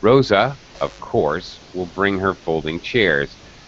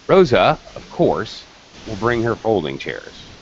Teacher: you can hear a dramatic change in my intonation to indicate that this is extra information and also there is paw there are pauses in my rhythm